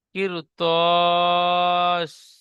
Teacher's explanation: র সাকিনের ডান দিকে জের এসেছে, র বারিক হয়, কিন্তু র সাকিনের পরে হরফে মুস্তালিয়া 7টি অক্ষরের মধ্যে ত এসেছে, তাই রকে বারিক হবে না, পুর পড়তে হবে।